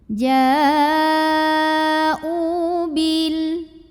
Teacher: Oke, u-nya dibaca panjang 2 harokat. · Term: mad badal